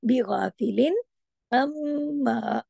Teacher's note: अलिफ की वजह से दो हरकत खींचना भी है, लेकिन मोटा भी करना है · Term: मोटा हर्फ